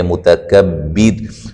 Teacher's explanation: الف مدہ ہے، غل را کو موٹا ادا کریں گے، متکبر جب وقف کریں گے را کو باریک کریں گے